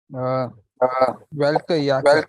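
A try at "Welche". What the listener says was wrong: It's not welke, it's Welsche.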